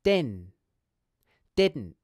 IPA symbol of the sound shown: dɪn